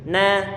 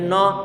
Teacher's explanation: kita baca tipis karena dia huruf punya sifat istifal sehingga tarqiq tipis. Na, tidak boleh no tapi na.